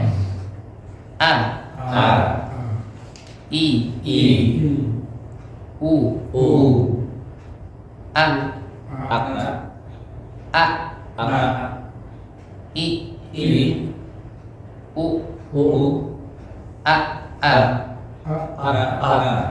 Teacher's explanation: Yang jelas hamzah ini tempatnya ada di pangkal tenggorokan